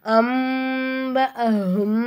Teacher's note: அடுத்ததான் நூனை சாக்கின் வந்திருக்கு, பா வந்திருக்கு. அப்போ நூனை சாக்கின் என்ன செய்யணும், மீமை மாற்றி நம்ம உச்சரிக்கணும்.